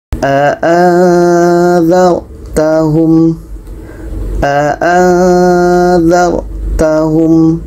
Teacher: Jadi nun mati bertemu za ikhfa hakiki, dibaca dengan samar dan dengung.